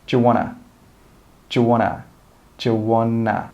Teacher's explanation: And we don't say 'want to.' We also join them together and we say 'wanna, wanna, wanna.'